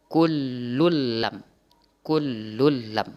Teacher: tanwin bertemu dengan lam itu dibaca idgham bila gunnah. Melebur tanwin itu ke lam.